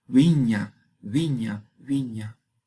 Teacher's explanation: se pronuncia con los dos labios como fricativo. El sonido es wa, como viña, viña, viña.